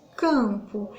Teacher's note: Ele é tipo como se ele não existisse na pronúncia, e esse A é como se ele tivesse um acento til. Então, eu fecho o som desse A, ele sai pelo nariz, é um som fechado, ele não sai pela boca. Eu não consigo pronunciar o M abertamente, ele tem uma certa dificuldade na hora de sair.